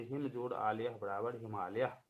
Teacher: हिम के अंत में अ है, आलय के आरंभ में आ है। अ और आ दोनों मिलकर के आ वर्ण बन जाते हैं, यह दीर्घ संधि है।